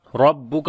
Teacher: را کو موٹا پڑھیں گے، اس کے اوپر زبر ہے